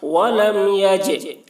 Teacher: جیم حروف قلقلہ میں سے ہے اور اس پر جزم ہے، اس لیے جیم میں قلقلہ ہوگا